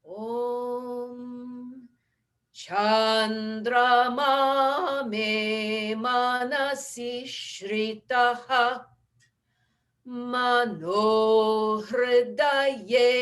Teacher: start on the low note because there's the dash underneath the A in Chan